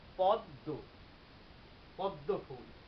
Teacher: এখানে দয় মফলা থাকার কারণে হয়ে যাবে কি দেখো, পদ দয়কারে দো, কিন্তু ম বর্ণটি চন্দ্রবিন্দু রূপ ধারণ করবে, পদ্ম একটি নাসিক্য বর্ণ চন্দ্রবিন্দু রূপ ধারণ করলো, পদ্ম, একটু নাকে বাজবে